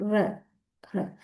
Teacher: along with the vibration, we curl the tongue back towards the hard palate · The tongue curls back in producing the consonant. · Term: retroflexes, retroflex